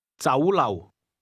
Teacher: The Cantonese word restaurant is pronounced with a combination of mid-rising and low-level tones.